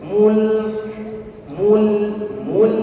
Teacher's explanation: lam huruf tipis jadi ditarik ke senyum · Mim dhammah yang imam musyafatain, kita bonyokkan bibir kita masuk ke huruf lam sukun, lam huruf tipis dan ditarik ke senyum. Mul ya, mimnya dhammah dimonyokkan, lamnya ditarik ke senyum.